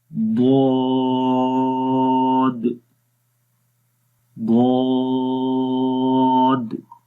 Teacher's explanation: منہ کو کھول کر پڑھیں گے، آواز کے اندر موٹائی آئے گی، آہستہ سے زبان کا جو بغلی کنارہ ہے، سائڈز ہیں، وہ اوپر والی داڑھوں کی جڑوں کے اوپر لگے گا اور اس کے اندر درازی آتی ہے۔ تو اب اس کو پڑھیں گے ضاد، ضاد، ان کو کھول کر پڑھیں گے۔ · تو اس کو ہم نے پڑھنا ہے ضاد، منہ کو کھول کر پڑھیں گے، آواز کے اندر موٹائی آئے گی، آہستہ سے زبان کا جو بغلی کنارہ ہے، سائڈز ہیں، وہ اوپر والی داڑھوں کی جڑوں کے اوپر لگے گا اور اس کے اندر درازی آتی ہے